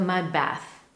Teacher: the way our mouth moves prevents us from making that clear D sound at the end of mud. And instead, we hear a more pronounced B sound in the word bath.